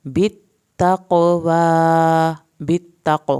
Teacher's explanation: قاف کا قلقلہ کرنا ہے